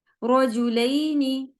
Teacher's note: तो आप देखेंगे कि रो हैवी पढ़ा गया